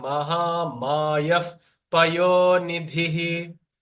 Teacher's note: The Visarga, when it is followed by Pa or Pha, the Visarga turns into a F sound